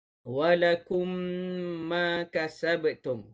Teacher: Manakala syafawi pula kerana makhraj mim dibaca melalui dua bibir dengan memasukkan dengung padanya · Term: idgham syafawi